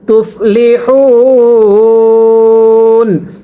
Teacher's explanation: ওয়াকফের সময় 3 আলিফ টানতে হবে।